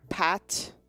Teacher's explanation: It's like an aspirated P, so it has a puff of air.